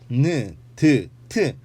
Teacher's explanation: 니은, 디귿, 티읕 셋 다 느, 드, 트로 발음해보면 발음할 때의 조음 위치는 같은 것을 볼 수 있죠.